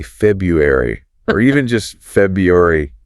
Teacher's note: That first R sound often disappears entirely.